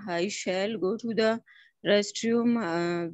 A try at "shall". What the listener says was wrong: Restroom to bahut acha se pronounce kiya, but there is something. L ko thoda sa L karke pronounce kare. I will, shall. It sounds like that.